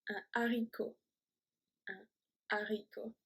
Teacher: we do not pronounce the H in English.